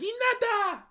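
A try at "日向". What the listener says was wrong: More emphasis on the he.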